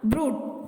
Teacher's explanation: அது கொஞ்சம் இழுத்து சொல்லணும், அது லாங் ஊ சவுண்ட்